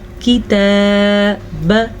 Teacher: تا کے اوپر کھڑی زبر ہے تو تا کو ہم کھینچ کے پڑھیں گے، لیکن کاف زیر کی، تا کھڑی زبر تا، کتاب۔